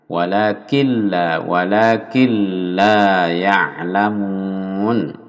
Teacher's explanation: Walakin la nun, sukun bertemu lam ini, masuk nunnya hilang. Lalu tanpa mendengung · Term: idgham bila gunnah